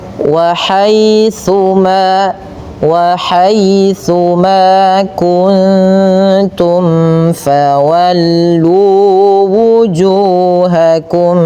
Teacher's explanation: hati-hati dalam melafalkan tsa jangan sampai terbaca dengan huruf sin ya. Dia agar sempurna daripada makhraj huruf tsa ujung lidah kita kita tempelkan dengan gigi atas ya.